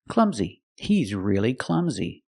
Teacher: last sound is a long e like green beans clumsy clumsy the stress is on the first syllable